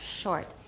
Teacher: Less rounding for sh and it'll sound more natural.